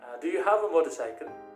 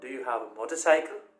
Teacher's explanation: when we reach the last part of the last word of the sentence, we increase the pitch a bit. · The second one, do you have a motorcycle? So when I raise the pitch, when I reach this last part, cycle, it makes this utterance a question. So it is rising pitch used to ask questions.